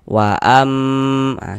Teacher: di bagian amnya itu suaranya itu kita tahan, kita panjangkan sejenak sepanjang dua harakat. Wa am. Ah, kita tahan.